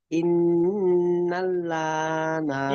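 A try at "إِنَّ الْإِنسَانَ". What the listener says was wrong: ইন্নাল্লা পড়ছেন কেন? এখানে নুন লামের সঙ্গে জুটলে নুন লাম জবর নাল,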